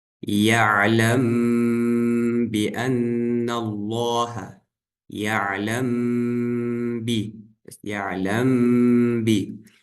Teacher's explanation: Здесь мы мим читаем, но удлиняем назализацию на 2 огласовки. В общем, на букве мим мы смыкаем губы, удлиняя на 2 огласовки, размыкаем их на букве «ба».